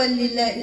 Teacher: اللام مرققه تقبل منها كسره · ادغام اكمل ما يكون بدون غنه